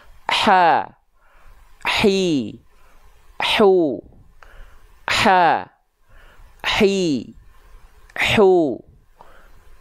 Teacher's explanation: pastikan dilafalkan dari bagian tengah tenggorokan nafasnya berbisik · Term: H kecil